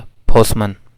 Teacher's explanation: पोस्टमैन में ठ की एलिजन होती है